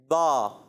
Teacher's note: دونوں ہونٹوں کے تر حصے سے ادا ہوتا ہے